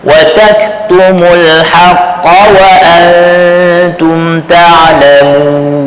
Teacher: Kaf sukun, dia ada hams, bersifat dia desir kan. Wa tak, tapi dia tidak kuat atau sampai bunyi watak.